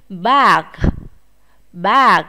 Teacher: Có chữ G ở đằng sau, chúng ta cũng phải bật hơi chữ G này nhé.